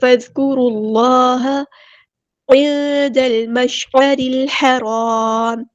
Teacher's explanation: دال کو ہم نے لام کے ساتھ ملا دینا، حمزۃ الوصل ہمارا ڈراپ ہو جائے گا. لام یہاں پر لام قمریہ ہے، اس کو ہم ظاہر کریں گے. مشعرل عین کو مستحل ہے کہ مڈل تھروٹ سے ادا کریں گے.